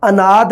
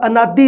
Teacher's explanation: ਹੁਣ ਇੱਥੇ ਕੀ ਆਹ ਲਘੂ ਸਵਰ ਹੈ, ਛੋਟੀ ਮਾਤਰਾ, ਇਹ ਕਿਹਾ ਜਾਂਦਾ ਵੀ ਅਖੀਰਲੀ ਸਥਿਤੀ ਵਿੱਚ, ਅਖੀਰ ਦੇ ਵਿੱਚ ਆ, ਇਹ ਸ਼ਬਦ ਦੇ ਅਖੀਰ ਦੇ ਵਿੱਚ ਲਘੂ ਸਵਰ ਹੈ, ਇਹ ਉਚਾਰਿਆ ਨਹੀਂ ਜਾਊਗਾ। ਅਨਾਦ ਉਚਾਰਿਆ ਜਾਊਗਾ, ਅਨਾਦੀ ਨਹੀਂ ਉਚਾਰਿਆ ਜਾਊਗਾ।